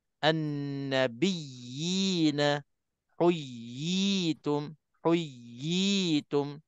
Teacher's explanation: Ya yang ada sabdu sebelum berjumpa dengan huruf mad itu, kita bagikan ya sabdu itu betul-betul. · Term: tamkin